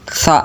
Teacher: Sa ya, bukan sya. Karena huruf sa yang posisi lidahnya itu kecepit di antara dua gigi